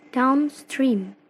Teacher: primary stress is on the second word in any word class the combination surface as adverb are usually final stressed and the primary stress is placed on the second word and the secondary stress on the first word